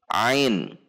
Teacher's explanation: Makhraj huruf Ain, yaitu keluar dari tenggorokan bagian tengah, tepatnya pada tulang rawan elastis